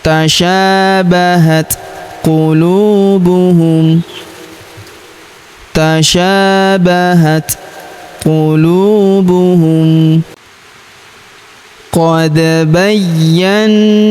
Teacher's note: huruf da berharokat sukun kita pantulkan atau kita qalqalahkan